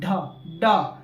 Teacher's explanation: जीभ हमारा ऊपर की ओर सट के तुरंत झटके के साथ नीचे गिरता है। ड तुरंत ऊपर सटेगा नीचे गिरेगा।